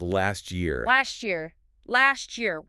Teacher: the T at the end of last and the Y at the start of year often blend to create a chi sound.